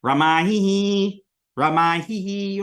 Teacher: get that aspirated hus so you know that there's a visarga there